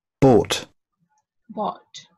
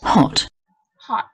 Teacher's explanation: so it's long and with rounded lips. Now this is hot, hot. Again with rounded but small sound, short sound.